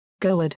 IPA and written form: ˈɣudə (goede)